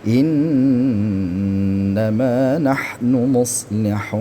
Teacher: Innama di sini ada nun ghunah ya, ghunah musyaddadah. · Muslihunnya panjang 6 harakat ya, karena ini adalah mad arid lisukun ya.